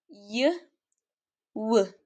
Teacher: consonant sounds produced when two speech organs comes close together but not close enough to create friction